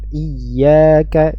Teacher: Mad thabiii pada kata iyaka ya ya dibaca Dua harakat